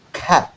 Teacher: Pada kata cat itu tetap diledakkan ya, yang belakang itu ada T ya. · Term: bunyi plosifnya